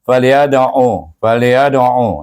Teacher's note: Fal, fa dengan lam, ya dengan dal, ya ada. Iaitu dal huruf qalqalah, baca dengan qalqalah segera.